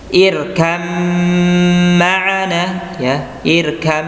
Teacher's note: Kemudian yang berikutnya adalah yalhas dzalika, ya, ini ya, ya, irkam ma'ana, ya, irkam, seolah-olah tidak ada baknya, ya, padahal irkab, ya, aslinya adalah irkab ma'ana, tapi langsung masuk ke huruf mim, irkam ma'ana.